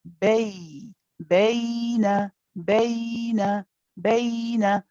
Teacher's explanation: The ya is a letter that you can stay on for a bit, what we call rakhawa. Okay, so you don't need to rush and say baina, but you can keep the ya running for a bit.